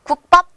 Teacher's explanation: 우리는 일반적으로 국밥 주세요라고 된 소리로 세게 발음하게 됩니다